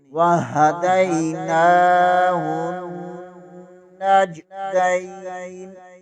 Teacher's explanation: ہاء حرف ہلکی میں سے ہے، حلق سے آواز نکلنی چاہیے۔